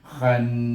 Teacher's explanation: bila dia tasydid, huruf nun tasydid, kita baca dengan gunah 2 harakah. Wajib baca dengan gunah 2 harakah.